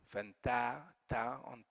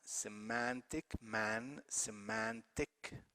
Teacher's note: the last syllable which is suffix is not stressed the stress is on the one before it